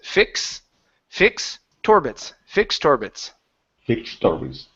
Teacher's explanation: move that T sound, the ED, the T, move that over to the word orbits. Okay, so you're no longer worrying about pronouncing a T at the end of fix.